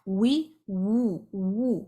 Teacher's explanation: تو اس کے مخرج میں زبان کی ہونٹوں کی گولائی ہے، ہونٹوں کا گول ہونا اور زبان کا پیچھے سے اٹھ جانا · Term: واو غیر مدیہ